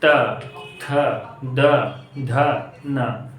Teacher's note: त वाला जो पूरा लाइन होता है उसको कहां से बोला जाता है दंत